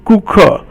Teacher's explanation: 顾 客, and that's all fourth tone, and that means customer.